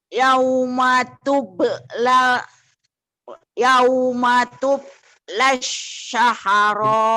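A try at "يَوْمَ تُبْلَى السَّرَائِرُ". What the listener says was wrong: Saharo. Enggak ada hanya. Bukan. Saro doang Bu. Saroir. Ibu tambah. Nah, sinnya sin kecil.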